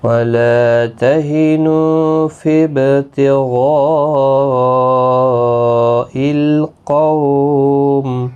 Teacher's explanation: غین مستعلیہ ہے، پر پڑھا جائے گا · وَلَا تَهِنُوا فِي ابْتِغَاءِ الْقَوْمِ وَلَا لا الف مدہ ہے، تہنو نو واو مدہ ہے، با ساکن پر قلقلہ ہوگا